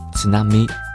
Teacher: the Japanese ts is an alveolar affricate, which can be compared with the palatal affricate ch. Also, the bracketed ts should be taken as a single symbol.